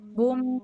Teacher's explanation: Kalau dengung yang mim tasydid, contohnya yang baris kedua sebelah kiri. Kitabum, bum itu mah bibirnya lapat. Bum, tapi ke hidung nyambung.